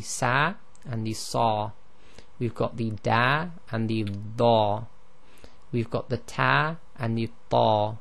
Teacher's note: the heavy letters, if you were to say them slowly by yourself, you will see that the tongue is raised at the back of the mouth